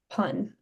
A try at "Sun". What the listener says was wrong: Very close. Try to get that s sound. Sun. I'm going to have to practice have you practice the s sound by itself. What I want you to do is place your tongue behind your teeth and keep your tongue long and narrow. S.